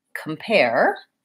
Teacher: the second syllable is stressed